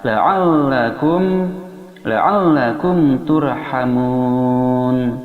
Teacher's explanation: ain, makharijul hurufnya berada di tengah tenggorokan bersama ha